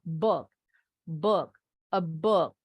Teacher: U-nya pendek, jadi nggak perlu monyong.